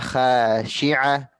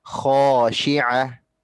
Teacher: Kemudian yang ketiga, di kata khosyi'ah, huruf kho-nya bunda itu perlu ditebalkan lagi. Karena huruf kho itu termasuk huruf isti'la, huruf yang tebal.